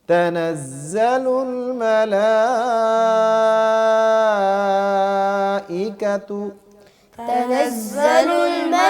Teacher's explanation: حمزہ کی واضح آواز آئے، اس میں نرمی نہیں کرنی، تحقیق کے ساتھ حمزہ کو پڑھنا ہے